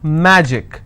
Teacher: magic I will stress on Ma